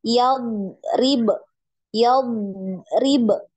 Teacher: Dod ini dialirkan ya suaranya dialirkan jangan dipantul